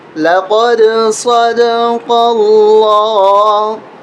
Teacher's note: لفظ اللہ کو یہاں پر موٹا کر کے پڑھیں گے، اس لیے کہ اس سے پہلے زبر ہے۔ زبر اور پیش ہونے کی صورت میں لفظ اللہ موٹا کر کے پڑھا جاتا ہے۔